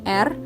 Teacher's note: Yang kedua, ada bunyi R, yang mana bunyi ini dihasilkan oleh alveolar dan trill atau diiringi dengan getaran